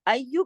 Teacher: اگلا جو یا ہے اس پہ تشدید ہے. ایو، اس طریقے سے اس کو سختی سے جوڑ کے پڑھنا ہے. یا، اس کو کھینچنا ہے، اس کے بعد جوڑنا ہے.